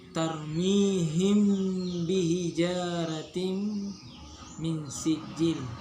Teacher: Hukum bacaan disebut ikhfa syafawi apabila mim mati atau mim sukun bertemu dengan huruf ba. Adapun cara membacanya harus dibunyikan samar-samar di bibir dan didengungkan.